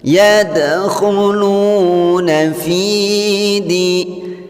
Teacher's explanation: Hukum bacaan qalqalah surah atau pantulan kecil. Jadi cara membacanya diperhatikan dengan memantul. Yadkhulu. Jadi tidak boleh tidak ada pantulan.